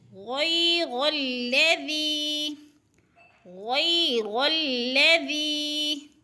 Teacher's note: ذی ذی، یا ساکن سے پہلے ذال کے نیچے زیر ہے تو یا مدہ تھوڑا سا کھینچ کر یعنی ایک دو حرکات کے برابر کھینچ کر